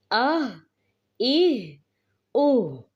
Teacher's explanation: ہا کی ادائیگی ہم اقصی حلق سے کریں گے. حمزہ زبر ہا آہ، حمزہ زیر ہا ایہ، حمزہ پیش ہا اوہ، آہ ایہ اوہ.